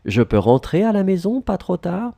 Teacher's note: Keep in mind, because we have the same order as for affirmation, we need to raise your voice, our voice in the end.